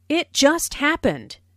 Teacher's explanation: notice the stress on just which emphasizes that the accident happened very very recently